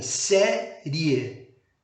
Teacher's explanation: começamos aí com uma semivogal e o som cresce para o topo da sílaba para vogal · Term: crescente